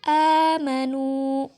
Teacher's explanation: karena huruf mad bertemu hamzah dalam satu kata, jadi cara membacanya panjangkan 2 harokat. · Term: mad badal